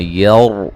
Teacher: را ساکن سے پہلے زبر ہے، را کو موٹا ادا کریں گے